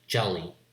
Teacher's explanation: Two L's will mean that the L has a certain longer period of time to say that L. But in English, there's no distinction between short and long consonants, so we have only one L.